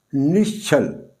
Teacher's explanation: यहां विसर्ग के बाद छ है और ये जो विसर्ग है ये यहां श में बदल गई है।